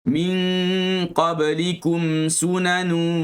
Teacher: Nun mati bertemu dengan qaf. Kita rapatkan pangkal lidah ke lelangit bahagian yang ada daging. Bahagian langit lembut.